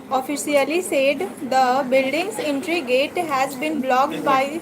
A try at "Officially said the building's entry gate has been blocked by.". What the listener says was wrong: एक एक वर्ड अलग अलग करके क्यों पढ़ रहे हैं? एक सेंटेंस की तरह पढ़ो ना.